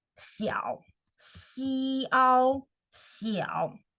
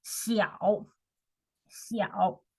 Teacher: third tone, so you go down first and then you go up. Falling tone first and then rising tone.